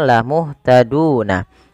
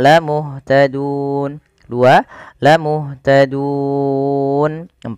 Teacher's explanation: kita boleh memilih untuk memanjangkan lafal dun dengan mematikan nunnya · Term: mad arid lisukun